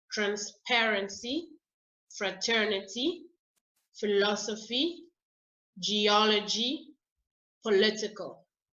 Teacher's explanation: So these are the examples I've given you here. You stress the second syllable when the word ends in CY, TY, PHY, GY, or AL.